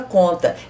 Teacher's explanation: O som nestas palavras ficam nasalizados, que os sons saem dos pulmões e passam pelo nariz e pela boca. Então as letras M e N depois das vogais não representam fonemas.